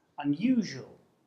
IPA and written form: ʌnju:ʒu:əl (unusual)